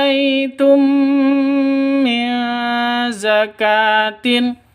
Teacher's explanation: mim mati bertemu dengan mim masuk ke mim yang kedua disertai dengung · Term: idgham mislain